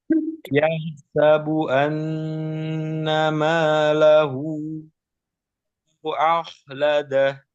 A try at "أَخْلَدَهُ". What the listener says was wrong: Eh, tebalnya bukan dimulai dari a, tapi kho-nya aja. A tetap tipis.